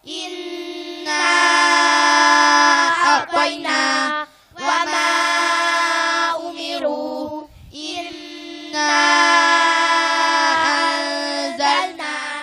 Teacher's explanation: Baca ismu fasil. Mad tabi'i bertemu hamzah di lain kalimat. Panjangnya 2,5 alif atau 5 harokat. Contoh, Inna a'tayna wa ma umiru, inna anzalna.